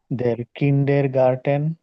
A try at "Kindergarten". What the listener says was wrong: কিন্ডের না, কিন্ডা। দেয়া কিন্ডার গার্ডেন।